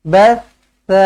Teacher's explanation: sa di hujung lidah